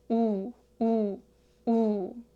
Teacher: gently extend your lips outward, 우, 우, like you're slightly pushing the sound forward